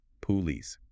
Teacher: They give that first O a nice round full sound, engaging their lips and taking their time.